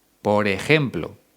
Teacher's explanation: Aquí en Madrid, donde yo vivo, esa J es mucho más fuerte.